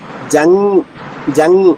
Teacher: జ తర్వాత అనుస్వరం పెదవులు కలవ్వు జంగ్ చూడండి న పెదవులు చూడండి జంగ్ జంగ్ నాలిక మధ్యభాగం పైన వచ్చుంది